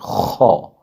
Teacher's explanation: آگے خو، حروف مستعلیہ میں سے اسے ہر صورت پر کر کے پڑھیں گے، چاہے کوئی بھی حرکت ہو اس کے اوپر یا نیچے، خو، خراٹہ دار آواز سے پر کر کے، خو۔